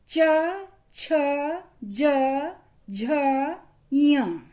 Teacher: इनको जब हमने बोला तो हमारी टंग तालु से स्पर्श कर रही है। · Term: च वर्ग